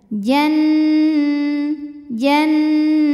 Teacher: Jim maka mim sukun dibunyikan dengan jelas lalu Nun tasydidnya ini hukumnya ghunah musyaddadah karena Nun tasydid maka kita bunyikan dengung